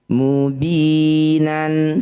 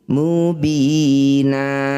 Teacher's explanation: bunyi fathah tanwinnya kita ganti jadi fathah panjang jangan disukun. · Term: mad iwat